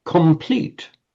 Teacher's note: The N wants to become an M because it's immediately before a P.